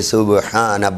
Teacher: سبحان، با کو کیا کرنا ہے؟ قلقلہ کرنا ہے